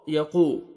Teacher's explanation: واو مد ہے، آپ نے قاف کو 1 سیکنڈ کھینچنا ہے